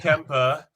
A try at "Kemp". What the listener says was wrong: It's just Kemp. You don't need to pronounce the E.